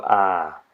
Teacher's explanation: sound you make when the doctor asks you to go ahh you open your mouth wide this is an open front unrounded vowel